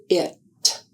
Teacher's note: To make the sound of the letter I, the sound is made with an open mouth. The tongue is in a high front position in the mouth. I is a voiced sound.